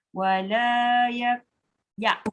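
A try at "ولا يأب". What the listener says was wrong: Dia bukan yak. Yak tu jadi kaf. Itu yang bergerak pangkal lidah. Ya bawah sekali. Hamzah. Bukan ak. Ak ke atas.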